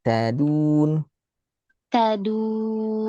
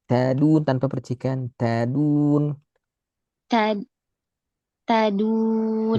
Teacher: Tadun lebih lembut ujung lidah belakang gigi.